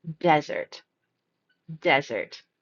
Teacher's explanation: This word here is D-E-S-E-R-T, and the first pronunciation will stress the first syllable